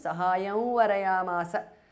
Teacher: The anuswara changes to the nasal of va.